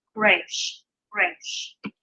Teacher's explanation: So Resh, and this is not going to be our R. This is actually going to have more of a guttural sound to it, a little bit more of an H sound on the front.